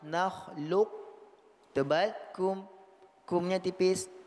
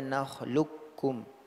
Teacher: huruf qaf menjadi huruf kaf bertasydid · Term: muqaddam